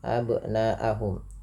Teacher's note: Kemudian panjangkan bunyi suara na, yang dimana di sini na-nya dipanjangkan 4 atau 5 harakat yang kita hukumi dengan bacaan mad wajib muttasil.